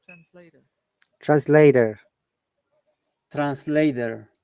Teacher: americans pronounce the r sound at the end but we do not british english doesn't do that don't don't pronounce what letter r the r sound like translator